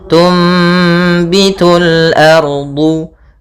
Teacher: Apabila ada nun sukun bertemu dengan huruf ba, ya, maka kita namakan dengan iklab, yaitu cara membacanya adalah suara nunnya diganti dengan suara mim